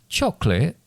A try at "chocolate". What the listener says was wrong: interesting way of pronouncing that chocolate what that says you seem to be saying it c c h o c l i t